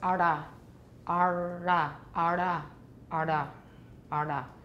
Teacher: Dur, we have to curl our tongues. If you have a curled tongue retroflex for dur, you might make a flap.